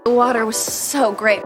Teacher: In American English, the T sound in words like water becomes a quick, soft flap like a light D sound.